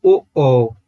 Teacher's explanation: जिसमें हमारे कंठ का और होठों का दोनों का प्रयोग होगा, वो होंगे कंठ ओष्ठ स्वर